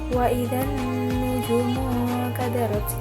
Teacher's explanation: Cara bacanya alnya tidak dibaca, jadi langsung dimasukkan ke dalam nun. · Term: al-syamsiyah